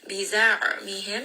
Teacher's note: ayn with tawassut. This is going to be from the middle of the throat.